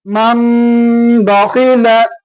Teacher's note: இக்லாப் என்கின்ற இந்த சட்டத்தின் அடிப்படையில மண்ப என்று படிக்கூடாது, மம்ப என்று படிக்கணும்.